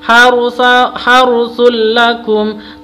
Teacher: harus dibaca jelas, langsung masuk tanpa dengung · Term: idgham bila gunna